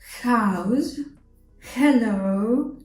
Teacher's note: H sound is an exhale like house hello and so on air comes from your throat and tongue doesn't participate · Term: English H sound